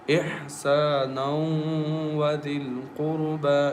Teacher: Idgham is here because noon tanween is followed by waw, and waw is one of the merging letters. So we merge noon tanween into waw and recite with nasal sound with gunna